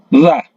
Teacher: Nah, kemudian keluar sedikit lagi di ujung lidah. Za, ya, ujung lidah menyentuh gigi bagian bawah.